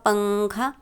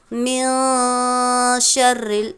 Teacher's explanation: جیسے ہم اردو میں پنکھا کے نون کو پڑھتے ہیں، بول کر دیکھیے ایک مرتبہ پنکھا، اسی طرح اخفا کا حرف ادا ہوتا ہے، یعنی من شرل نہیں پڑھیں گے بلکہ من شرل، نون کی آواز ہم ناک میں چھپائیں گے